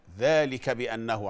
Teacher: ماخليش اي مده بعد الفتحه بتاعه الكاف بتاعه ذلك